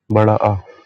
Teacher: विवृत मतलब बड़ा, तो पूरा मुख खुला हुआ है